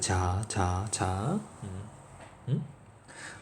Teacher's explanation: 그럼 얘는 막았다가 마찰음은 좁혀서 마찰을 일으키는 거라며. 그럼 막았다가 틈을 조금 내서 마찰을 일으키면서 내는 소리다. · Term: 파찰음